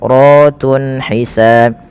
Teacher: ra-nya di sini dibaca dengan tafkhim karena ra-nya dibaca berharakat fathah, maka dia dibaca dengan tebal. Ratun hisan.